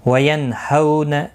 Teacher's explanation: وَيَنْهَوْنَ، نون ساکن کے بعد ہلکی ہا آیا ہے، اظہار ہلکی ہوگا، گنہ نہیں کریں گے. ہو واو لین ہے، تھوڑا نرمی کے ساتھ کھینچ کر ادا کریں گے